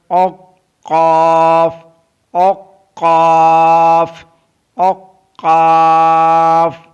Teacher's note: Qaf is pronounced from the root of the tongue and the soft palate.